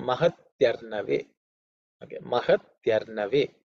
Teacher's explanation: this mahati arnave, e plus a becomes ya, so it has become mahatyarnave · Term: Sandhi